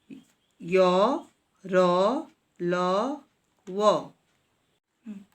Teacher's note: जिन व्यंजनों को बोलते समय जीभ मुख के किसी भी भाग को पूरी तरह स्पर्श नहीं करती उन्हें अंतस्थ व्यंजन कहते हैं